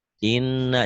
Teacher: Setiap nun dan mim yang ada sidahnya, ada pendobel gini, ini gunnah. Gunnah itu dibaca dobel, dengung ke hidung dan ditahan. Inna seperti hurufnya dua, satu mati, satu hidup.